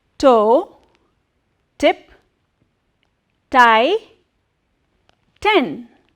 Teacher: the tip of the tongue touches a little behind the back part of upper teeth on your palate which is a hard part